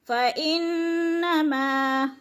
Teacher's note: माँ को अलिफ मद्दा की वजह से खींच कर पढ़ना है एक अलिफ के बराबर